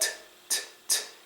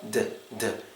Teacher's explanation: when you're making the T sound it's like t t you're not using your voice